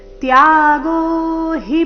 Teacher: ತ್ಯಾಗೋಹಿ ಪುರುಷಾಗ್ರ ತ್ಯಾಗೋಹಿ ಪುರು ಈ ರೀತಿ ಹಿನ ದೀರ್ಘ ಮಾಡಬಾರದು ಗಮನ ಕೊಡಿ ತ್ಯಾಗೋ ನಲ್ಲಿ ಎರಡು ಅಕ್ಷರ ದೀರ್ಘ ಮುಂದೆ ಹಿ ರಸ್ವ ಬರಬೇಕು